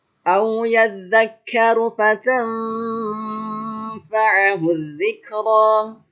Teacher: di situ ada fatam, nun mati ketemu fa, dibaca eng dan ditahan selama 3 ketukan. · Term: ikhfa